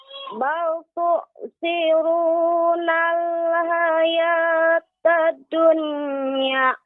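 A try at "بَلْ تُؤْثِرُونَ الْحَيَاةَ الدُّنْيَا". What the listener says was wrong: Nah, ini Ibu terlalu cepat ya, terlalu singkat jedanya atau terlalu singkat penekanan pada dal bertasydid. Hayatad dunya bal tu'sirunal hayatad dunya. Jadi tidak terlalu cepat Ibu pada tasydid huruf dal. Hayatad dunya. Hayatad dunya. Jadi jangan terlalu singkat, Ibu.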